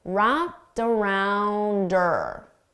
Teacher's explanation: we commonly get rid of the H sound on her. So I can do that here as well, and then I can connect it together.